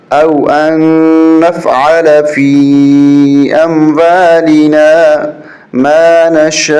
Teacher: صرف آخر میں حمزہ ظاہر ہوگا، زبر زیر پیش ختم ہو جائے گی